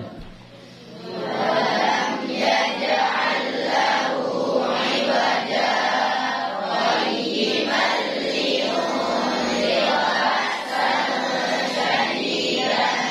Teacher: Jadi iwaja qayyiman, berhenti langsung sambung. Berhentinya enggak mengambil nafas. Ya, berhentinya tidak mengambil nafas. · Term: saktatan latifatan